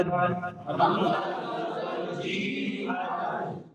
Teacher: جب روکا تو زبان کا درمیان اوپر تعلق سے لگ گیا